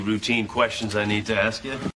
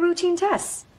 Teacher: the accent is in the second syllable corresponding to teen